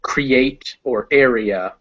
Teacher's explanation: the ea of create or area where they're two separate sounds